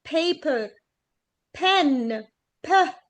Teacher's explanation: لا، ده بيخرج منها هواء كتير جدا، فبتبقى ب وتملي بنعمل التست بتاعنا ان انت بتحطي ورقة، حطي ورقة كده اهوت قدامك وتقولي paper pen ب، هتلاقي ان ان الورقة المفروض تتحرك. ليه؟ عشان طالع هوا كتير جدا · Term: plosives